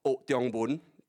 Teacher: So notice the O goes down because it's part of the phrase.